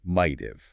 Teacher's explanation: If it comes after a consonant like the word might, your mouth needs a tiny burst of air to reset between the hard T and the V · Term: lazy schwa sound